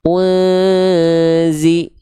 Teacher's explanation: Jadi bukan langsung, enggak langsung nempel ke makhraj huruf zanya. Ketika samar dengung itu ya lidah kita makhraj huruf zanya baru bersiap-siap belum nempel. Kalau sudah nempel berarti bukan samar lagi sudah jadi zai berarti. · samarkan bunyi n plus disertai dengan dengung yang ditahan dua harakat dan lafalkan masuk ke huruf zainnya unzi. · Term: ikhfa